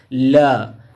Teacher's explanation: प्रयत्न के आधार पर ल पार्श्विक ध्वनि है वे ध्वनियाँ जिनके उच्चारण में आंतरिक वायु प्रवाह मुख विवर में जिह्वा के द्वारा किसी स्थान पर अवरुद्ध कर दिया जाता है तथा वायु जिह्वा के बगल से प्रवाहित होने लगती है, उसी को पार्श्विक ध्वनि कहलाती।